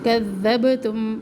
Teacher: ففریقا کذبتم قوف سے آواز ایک دم کاف پہ آ جاتی ہے، تو یہاں پہ دھیان رکھیں کہ بڑی غلطی نہ ہو، حرف بدل نہ جائے۔ کذبتم با کے اوپر کلکلا، ذال کو نرمی سے پڑھے